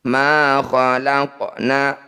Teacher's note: Ma khalaqna, qaf sukun di tengah bacaan disebut bacaan qalqalah, tepatnya qalqalah sugro. Bunyi qaf dipantulkan tapi sedikit saja atau mengalir saja pantulannya.